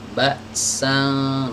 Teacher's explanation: posisi lidah ketika kita mengucapkan ikhfa ini mendekat ya ke makhroj huruf syin ini yaitu dengan mengangkat lidah bagian tengah Mbak sang nafas lagi dengung lidah tengah kita ini udah siap-siap